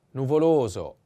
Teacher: the accent is on the second o